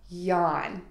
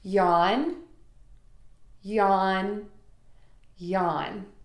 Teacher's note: Add the open vowel ah by opening your mouth wide, and then end with an N sound by touching the tip of your tongue to the back of your top front teeth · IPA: /jɒn/